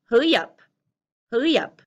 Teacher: The end of the Y pushes into the up. You don't hear them separated, hurry up. They push together and you hear, hurry up, hurry up.